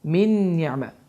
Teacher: Və qeyd etdiyim kimi nun hərfi də idğam ma'luğunna hərflərindən biridir. Bu zaman min sözündə olan sukunlu nun oxunmur. Ni'mə sözündə isə nun hərfi şəddələnir və düzgün oxunuş bu formada oxunur.